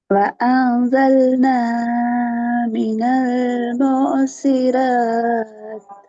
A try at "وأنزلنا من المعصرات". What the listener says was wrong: உங்களோட பிரச்சனைடா மினல் என்ற அந்த இடமெல்லாம் இழுக்கிறதுக்கூடிய நீட்டுறதுக்குரிய இடங்கள் அல்ல. நீங்க உண்மையில டோன் தான் அங்க பிரச்சனையை மாத்திக்கிறோம். وأنزلنا என்று போறதும் பிழை.